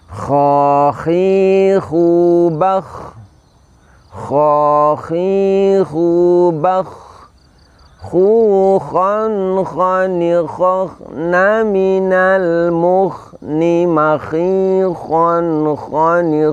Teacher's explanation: huruf H ini ketika diucapkan itu terdengar seperti ada suara layaknya orang yang mendengkur · Huruf kha ini kita ucapkan, kita keluarkan dari puncak tenggorokan kita ucapkan dengan cara mengangkat pangkal lidah.